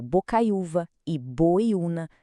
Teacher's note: O U forte vem depois de um ditongo, que é o ai ou oi, e a palavra é paroxítona.